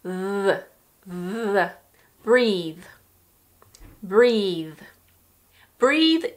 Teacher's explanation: This has the voiced TH at the end.